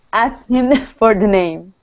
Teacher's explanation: the trick with the word asked, okay, is we do not pronounce the K